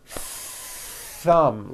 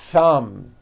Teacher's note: notice how long i'm holding the th sound